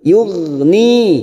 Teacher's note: ghain sukun bukan kol-kola, kita tahan jangan sampai memantul.